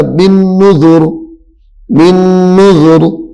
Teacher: جب رکنا ہے، وقف کرنا ہے تو پھر را موٹی ہو جائے گی، کیونکہ را ساکن ہو جائے گی